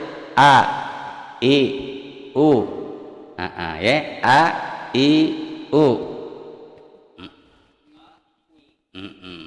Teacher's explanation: ini huruf alif makhrajnya dari tenggorokan